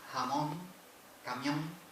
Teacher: no se pronuncia la N. Se pronuncia la vocal nasalizada, la vocal nasal.